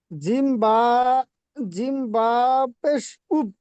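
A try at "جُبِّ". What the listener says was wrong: জিম বাপেশ জুব হচ্ছে না? আপনি জিম বলছেন আর উচ্চারণ আলিফের করছেন, হবে না তো না? জিম বাপেশ জুব বাজের বি জুব্বি। না, জুব্বি।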